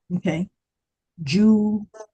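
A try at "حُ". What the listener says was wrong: No, that's ha. It does not have a dot, so it's not Jim. Ha, ha,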